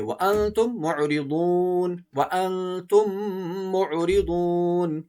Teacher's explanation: میم ساکن کے بعد اگر دوسری میم آئے تو دونوں میم کو ایک کر کے غنے کے ساتھ پڑھیں گے، اسے ہم ادغام کہتے ہیں۔